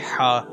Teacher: یہ درمیانی حصے سے حلق کے، ٹھیک ہے، وسط، حلق کے وسط سے یا درمیانی حصے سے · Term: حروف حلقی